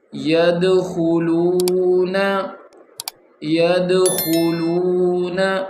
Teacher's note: خوا موٹا ہے، دال کے اوپر قلقلہ ہے. وقف کریں گے، سٹاپ کریں گے، یعنی کہ یدخلون.